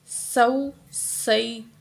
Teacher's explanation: سین کی آواز سیٹی کی طرح آنی چاہیے، سا کی طرح نہیں آنی چاہیے۔